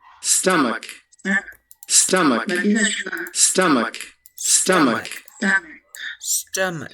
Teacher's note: para nosotros que hablamos español, para sonar más natural es como una E que se va transformando en A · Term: schwa